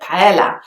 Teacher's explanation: a lot of people in the UK would actually pronounce with an L sound instead of the y sound that you will find in tortilla. So they will say tortilla, but paella.